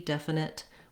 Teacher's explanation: It's okay if you use a released T, definite, with a little T sound. But when we're linking and when we're stopping, definite, we often use that stopped T.